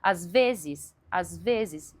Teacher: Às vezes, e eu sempre vou enfatizar o vezes.